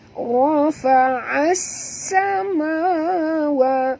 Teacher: bunyikan safir pada huruf sin ya. Rafa'as samawa, ma dua harakat ma asli, wa juga dua harakat.